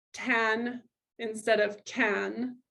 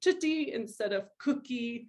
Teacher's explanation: your child is substituting a sound in the front of their mouth instead of saying a sound in the back of their mouth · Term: Velar fronting